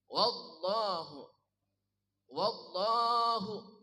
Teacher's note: lam pada lafaz Allah dibaca sangat tebal. Wallah, jangan wallah ya. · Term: taghlid